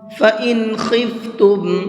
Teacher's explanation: اس نون کو صاف صاف پڑھیں گے، ظاہر کر کے پڑھیں گے، اس لیے کہ یہاں پر اظہار کا قاعدہ ہے، اور اظہار کا قاعدے کی دو شرطیں ہیں۔